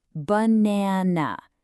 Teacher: The stress is right in the middle. So that middle a gets a clear sound.